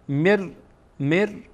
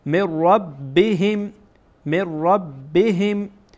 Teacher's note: میم مستقیما با را در اینجا وصل میشه، گویایی که نون در اینجا وجود نداره. مر رب رب رب رب، را با, با بایی که در اینجا هست وصل میشه. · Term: ادغام